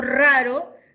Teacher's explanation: diacrítico encima eso significa que ahí en raro hay dos fonemas el fonema de inicio de palabra no es el mismo del fonema que está entre vocales al interior de la palabra uno es vibrante múltiple El otro es vibrante simple